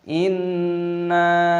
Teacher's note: "Dalam nakhafu mir-rabbina yauman 'abusan qamthariira", Inna di sini, biarawati memiliki tashdid; Aturannya adalah membacanya dengan ghunah (bunyi sengau) dan memanjangkan nun. Ada tanda alif , mad thabi'i, dipanjangkan selama dua ketukan, lalu dinasalisasi sebelum menyatu.